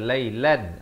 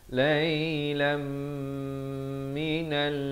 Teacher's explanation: Lailam idgham bi gunnah daripada lailan. Asalnya lam tanwin 2 di atas bunyi lan, tapi datang mim masuk berserta dengung.